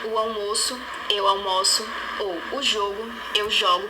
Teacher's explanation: alternância vocálica entre uma vogal aberta e outra fechada na relação nome-verbo